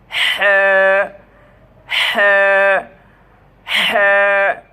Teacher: কণ্ঠনালীর মাঝখান থেকে চাপ দিয়ে শোষ আওয়াজ হবে। হা উচ্চারণ করতে শোষ আওয়াজ হবে।